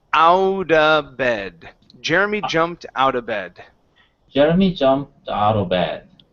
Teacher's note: we can change the word of to uh so we do not need to pronounce that V before the B